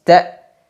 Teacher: Hamzah sukun diucapkan dengan suara yang langsung terputus